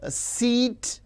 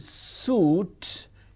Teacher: E is front close unrounded, whereas U is back close rounded